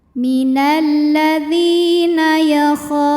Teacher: sebab ada Alif yang sebelumnya berbaris fathah maka huruf Kha panjang dua harakat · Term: Mad Thobi'i